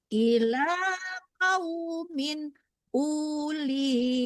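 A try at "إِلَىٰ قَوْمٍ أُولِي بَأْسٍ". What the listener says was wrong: U-nya tidak panjang ya, Bu. Ibu, U-nya tidak panjang ya, Bu. panjang U-nya, kan wawunya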